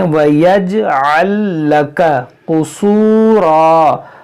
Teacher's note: قاف موٹا کریں گے، را موٹا کریں گے